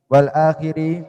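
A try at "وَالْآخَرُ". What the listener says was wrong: Wal akharu. Kalau akhir. Jadi bedakan antara akhir dengan akhor. Akhir di kasro itu intihau syai.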